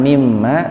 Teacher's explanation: Makanya karena ada nunnya pada di situ, mim yang keduanya harus dibaca gunnah, didengungkan untuk mengganti huruf nun. Makanya ada tasdid di situ.